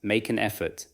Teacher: For make an effort, feel the final consonant in make attached to the vowel at the beginning of an. Then allow an to flow into effort.